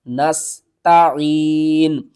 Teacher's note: سین کو آپ نے سیٹی کی آواز کے ساتھ پڑھنا